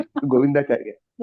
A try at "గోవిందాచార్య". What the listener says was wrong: చారి కాదండి, చార్య. గోవిందాచార్య.